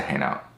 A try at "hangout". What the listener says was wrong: Hangout. Hangout. You're not pronouncing the G. Hangout.